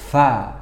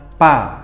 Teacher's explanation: Nah, huruf fa ini kita harus mengalirkan udara dalam mulut kita keluar. Fa melewati antara gigi dan bibir. Fa seperti itu. Jadi tidak tertahan, bukan pa. Nah, bukan bertemu bibir.